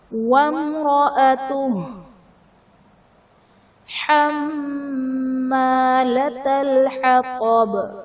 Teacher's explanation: حما میں میم مشدد ہے، یہاں پر ہم غنہ کریں گے اور الف مدہ کا قاعدہ ہے۔